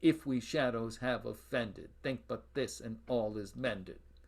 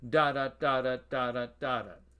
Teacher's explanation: Trochaic tetrameter, on the other hand, it's tetrameter, so there are only 4 feet, and each foot, rather than being an iamb, unstressed, stressed, is a trochee, stressed, unstressed. So a line of trochaic tetrameter goes da da da da da da da da x dash x dash x dash x dash.